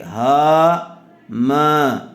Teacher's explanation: دونوں میں الف مدہ آیا ہوا ہے، تھوڑا تھوڑا کھینچ کر پڑھیں گے